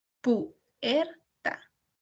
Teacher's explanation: Nosotros escuchamos más lo que es la sílaba tónica en la sílaba er.